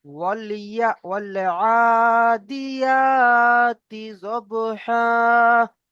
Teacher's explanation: তি টান দেবেন না, আ টান দেবেন আর ইয়া টান দেবেন